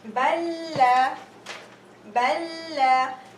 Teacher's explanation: The first lam is second lam has haraka, but in the Quran book, we're going to see that the second lam will have a shadda. Balla, and you merge the two lams together. And this is in case you have two different words. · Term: idgham